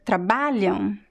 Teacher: noticed what is the stress syllable here is the ba so the am at the end is very weak because it's a weak syllable the ba is very strong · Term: stressed syllables